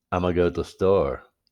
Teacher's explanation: gonna gets changed into na and then na gets changed into uh